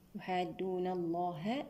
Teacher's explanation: لام لفظ الجلالة هنا مفخم لأن سبقه فتح